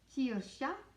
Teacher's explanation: the KJ together make more of a sh sound, a bit like in German when you say ich versus ach, ich. It's that almost like a cat hiss kind of at the front.